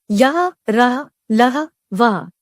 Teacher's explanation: वर्ग स्पर्श व्यंजन उच्चारण स्थान क वर्ग क ख ग घ न कंठ च वर्ग च छ ज झ न तालु त वर्ग त थ द ढ न मूर्धा त वर्ग तद थ द धर न दंत प वर्ग प फ ब भ ग म ओष्ठ दो अंतस्थ व्यंजन अंतस्थ का अर्थ है स्वर और व्यंजन के बीच में स्थित इन व्यंजनों के उच्चारण में वायु ना तो मुंह में कहीं स्पर्श करती है ना रगड़ खाकर निकलती है।